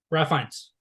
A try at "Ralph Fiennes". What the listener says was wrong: Yeah, it's Rafe. It's Rafe Fiennes. It is Rafe. It's spelled Ralph, but he pronounces it Rafe.